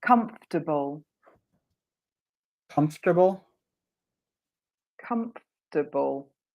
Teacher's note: I've got a disappearing syllable the o r is cut